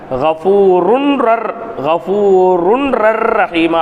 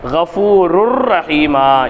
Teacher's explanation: அதுக்கு அடுத்து இருக்கக்கூடிய ரா என்பது இத்ஹாம் பிலாகுன்னாவினுடைய ராவாக இருக்கிறது இப்போ கபூரு அப்படின்னு தான் படிக்கணுமே தவிர கபூருன் ரர் கபூருன் ரர் ரஹீமா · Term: இணைத்தல்